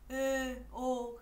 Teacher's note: nguyên âm cao còn gọi là khép vừa như là Ê, Ô